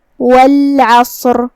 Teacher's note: صاد حروف التفخیم میں سے ہے، ہم اسے بھاری آواز میں منہ پھلا کے ادا کریں گے